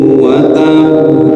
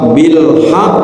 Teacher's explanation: dan jika berada di akhir kalimat atau wakaf ya, maka qalqalahnya mesti lebih jelas